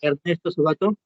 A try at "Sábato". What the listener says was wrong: Ernesto bueno, debemos pronunciarlo como Sábato, ¿no? Algunos, como su compañero le dicen Palma, le dicen Sabato, porque no lleva tilde. O sea, se debería llevar tilde porque sería esdrújula, ¿no? Sábato. El apellido es italiano. Entonces, no, su pronunciación no se ajustaría al castellano, ¿no?